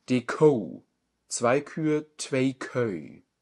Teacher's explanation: Ist beides ein Diphthong. OU und ÖÜ.